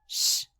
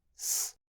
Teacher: Bem, as evidências indicam que era apical, x, e não laminar, s